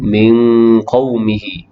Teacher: Pada kalimah min qawmihi, nun mati bertemu dengan qaf, hukum dia adalah ikhfa hakiki, bacaannya dengung sekadar 2 harakat